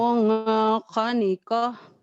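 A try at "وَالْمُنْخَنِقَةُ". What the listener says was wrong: Kenapa jadi mung? Kan ini idhar. Walmun khoniqah.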